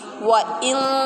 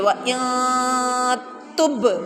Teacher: اخفاء ناک میں آواز لے کے جائیں گے